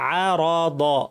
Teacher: র দ দুইটাই ভারী, আরাদহুম সব যেন ভারী হয়, অরাদহুম যেন না হয়।